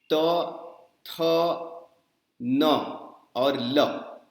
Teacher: त, थ, न और ल, ये जो चारों ध्वनियां हैं ये दांत से निकलती हैं